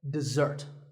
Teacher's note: this is dessert notice that the first syllable is dip and the second starts with a Z sound we stress the second syllable